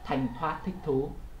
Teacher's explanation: thấy hơi nó là rất là nhiều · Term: bật hơi